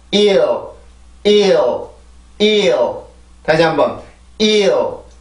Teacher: 이 발음에서는 여기에서는 혀 끝의 위치가 아래 치조고 혀 중간이 그냥 경구개로 가까이 갈 뿐입니다. 혀 끝은 반드시 아래 치조에 있어야 되고 L 발음을 해주기 위해서는 내가 혀가 치조로 가야 되죠.